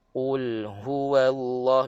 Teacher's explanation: ha keluar daripada pangkal tekak makhraj yang paling bawah oke dan Ha dia ada sifat ada bunyi angin